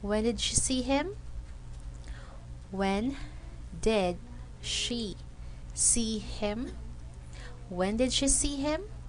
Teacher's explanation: the voice jumps up on the most important word and then goes down at the end